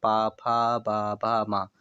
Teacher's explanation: दोनों ओठ आपस में टकरा रहे हैं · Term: ओष्ठ